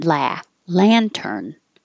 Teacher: this is an ah so keep your lips back and your jaw very open